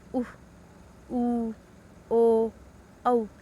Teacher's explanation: जिन स्वरों के उच्चारण में होठों की स्थिति वर्तकार हो जाती है उसे वर्तकार स्वर कहते हैं।